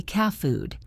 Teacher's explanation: Instead of making a sharp sound with your tongue, you just stop the air and hold it for a second. It is like the sound is cut off.